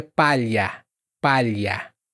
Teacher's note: O do LH é como uma lambida no céu da boca. Então você vai sentir lá, lá, só que mais para trás.